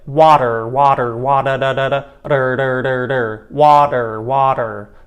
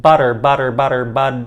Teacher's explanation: that is a tap or a flap sound it's almost like a fast d sound